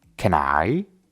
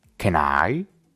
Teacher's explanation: go si observas bien realmente no decimos las palabras por separado can termina con la consonante n y I empieza con la vocal a entonces simplemente los unimos